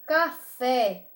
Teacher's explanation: na palavra café, o fé é a sílaba mais forte. Então, essa palavra já vai ser oxítona, porque as oxítonas, toda palavra que a última sílaba dela for forte, for a sílaba tônica, ela vai ser do grupo das oxítonas.